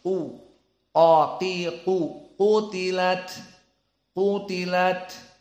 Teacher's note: qof di sini dalam keadaan mufakhamah u qo Qi qu qutilat qutilat maka di sini ada tafhim